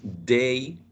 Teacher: It's plosive, alveolar, oral, but voiced.